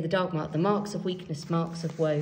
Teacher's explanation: the stress starts with a strong stress on marks and ends with another strong stress on woe